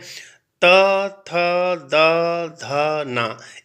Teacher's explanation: हमारा जो जीवा का भाग है वह दांतों से स्पर्श होता है इसलिए इसे दंत स्पर्श व्यंजन कहते हैं आगे बढ़ते हैं प